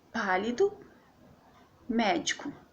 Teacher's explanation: a sílaba tônica tá no PA do pálido e tá no med médico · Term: proparoxítonas